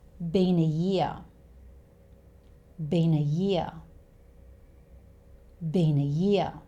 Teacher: Been ends with an n sound, a consonant sound, and this is followed by a vowel sound, which is actually the schwa sound here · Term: one long word